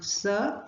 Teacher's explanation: the air passes through the wide open glottis without affecting the vocal cords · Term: voiceless sounds